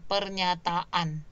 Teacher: Kemudian akhirannya itu adalah berawalan A juga. Maka di situ pasti ada penambahan fonem glottal stop ya. Ada jeda sebentar.